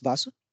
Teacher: is treatment of the soft th sound that is th sound since there is no soft th sound in Japanese a relevant sound from the Sashi line of kagana is chosen as the closest sound